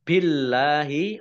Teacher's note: Allahnya dibaca tipis karena harokat di depannya kasrah